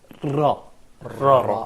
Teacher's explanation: So your tip of the tongue touches more than one time and quickly your alveolar ridge or probably the backyard of your teeth.